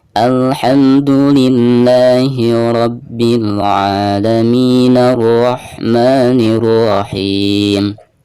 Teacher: jika diwasolkan atau disambung dari ayat sebelumnya, maka hamzah yang ada di sini tidak diberi harokat ya, jadi langsung ke ro